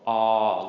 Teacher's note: this letter is called ah, long mid-tone.